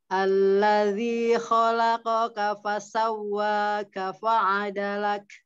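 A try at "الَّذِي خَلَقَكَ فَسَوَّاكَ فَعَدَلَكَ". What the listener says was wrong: San, tinggal mau tipiskan kafnya. Allazi khalaqaka fasawwaka fa'adalak. Jadi enggak apa sifat disidahkannya dulu baru hamzah keluar. Jadi fa'adalak.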